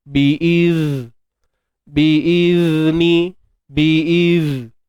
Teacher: Matikan zal ni, keluarkan hujung lidah.